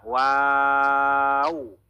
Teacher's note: এখানে দেখেন সাইডে লেখা রয়েছে দুই ঠোঁট গোল করে ওয়াও, দুই ঠোঁট গোল করে ওয়াও। মানে ওয়াও যখন আমরা পড়বো তখন আমাদের ঠোঁট একদম গোল থাকবে